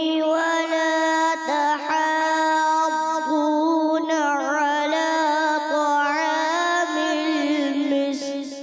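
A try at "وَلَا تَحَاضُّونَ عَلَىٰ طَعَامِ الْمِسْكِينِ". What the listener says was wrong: اس کو پھر ریپیٹ کریں گے کیونکہ آپ نے مد اس کو مد لازم ہے نا، اس کو ہم نے کھینچنا ہے. 3 الف کھینچنا ہے. یعنی کہ 6 حرکات. 1 الف یعنی کہ ایک بند انگلی آرام آرام سے کھلے تو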